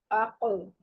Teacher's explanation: قاف جب ساکن ہوگا تو اس کی پلٹ کے آواز آئے گی, اس پہ قلقلہ ہوتا ہے